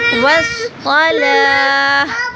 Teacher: آخر میں ہا کی آواز آئے گی وقف کی صورت میں.